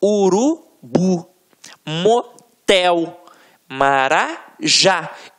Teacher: você vai perceber que realmente a pronúncia da última sílaba ficará mais forte. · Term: oxítona